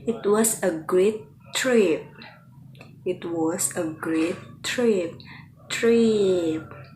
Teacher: Do you hear how that the tone of voice or that intonation, that pitch is falling on the final sound